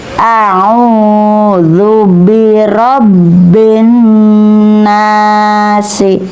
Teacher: Karena di sini ada huruf bertemu dengan nun bertasdid. Maka cara bacanya dengung atau disebut ghunah.